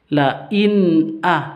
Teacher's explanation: nun sukun bertemu dengan hamzah itu dibaca izhar jelas tanpa dengung